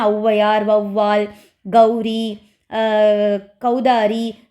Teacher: கௌதாரி சோ இந்த மாதிரி ஓகேங்களா முதல்ல வரும்போது ஒரு சொற்களோடு சேர்ந்து வரும்போது தனக்குரிய இரண்டு மாத்திரை அளவிலிருந்து குறைந்து ஒன்றரை மாத்திரை அளவில் ஒலிக்கும் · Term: அவகார குறுக்கம்